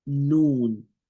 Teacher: You see the noon, the tip of the tongue touching the top part of the ridge of the mouth